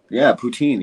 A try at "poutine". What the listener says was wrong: poutine is not poutine in French. It's poutine. So here's how you pronounce it. You say poo, okay, and then instead of saying teen, it's not teen like teenager. That's not how you say it. That's not a poutine. So you say poo, and then you say tin like Martin.